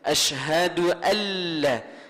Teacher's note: Kita jangan baca dah nun tu, kena baca lam selalu dah.